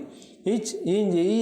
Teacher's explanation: நடுனா நடு அன்னத்தை தொடுவதால் உச்சரிக்கப்படுவது நடு அன்ன ஒலி. இச் இஞ்சி ஈ ஆகியவை நடு அன்ன ஒலிகள்.